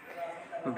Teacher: भा ओष्ठ महाप्राण घोष व्यंजन वर्ण का उदाहरण है।